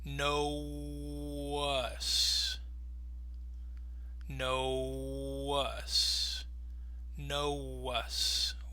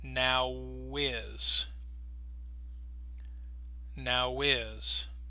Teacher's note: you can hear how the W is helping to glide those sounds together